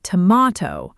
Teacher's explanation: >> Americans say tomato with that long A sound in the middle. >> And British speakers say tomato with a deeper rounder A sound, closer to father.